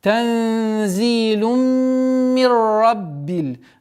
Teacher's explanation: Здесь у нас тензилум, полноценная ассимиляция с полноценной назализацией. В размере двух огласовок удерживаем назализацию, после которой идет у нас ассимиляция без назализации.